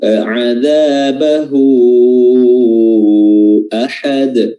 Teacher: Huruf dal di sini qalqalah, ya, qalqalah kubra karena berada di akhir bacaan.